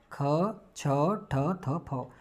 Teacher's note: देखिए स्पर्श हैं, अघोष हैं और महाप्राण हैं।